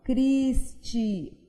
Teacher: Então, no meu nome, Cristiane, eu vou perceber que a penúltima sílaba é a tônica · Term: acento tônico